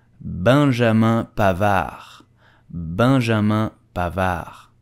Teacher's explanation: the D at the end is totally silent so do not pronounce it